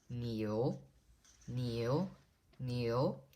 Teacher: Niu is the rising tone, which is the 2nd tone.